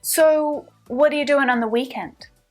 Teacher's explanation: now let's shift our emphasis back to the weekend away from you